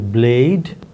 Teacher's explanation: For example, we have given a word such as blade, which have A as the nucleus, D as the coda, bl as the onset. Now, between b and l, b is a plosive, so it is less sonorous than l, which is liquid. So that's what we have is a stop, a voice stop, followed by liquid, followed by the nucleus.